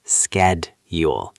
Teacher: In American English, we usually pronounce it with a K sound